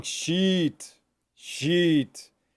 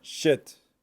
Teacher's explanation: So sheet is very long. Sheet, sheet. And then shit is very short.